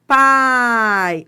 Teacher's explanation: a vogal vem antes da semivogal. Ó, pai. Ó, você vai do mais forte pro mais fraco. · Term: ditongo decrescente